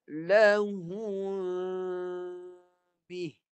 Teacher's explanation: Bibir atas dan bawah terenggang sedikit. Buka sikit. Supaya bunyinya tidak menjelaskan mim. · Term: sembunyikan mim